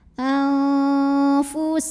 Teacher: Aniqtulu ada ikhfa awsat karena ada nun sukun menghadapi huruf fa, maka nun sukun dibunyikan samar-samar siap-siap menuju fa disertai bunyi dengung. Dengung dan samarnya sama karena fa ini makhrajnya tidak terlalu dekat, tidak terlalu jauh dari nun.